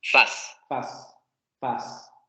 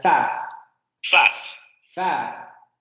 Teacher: Esta vocal en el francés de París está un poco más adelantada que la nuestra, ¿no? Nosotros pronunciaríamos algo más similar a esta. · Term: vocal más adelantada